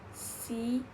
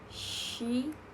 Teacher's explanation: S and sh are both voiceless fricative, but they differ in place of articulation. S is alveolar, while s is voice post-alveolar.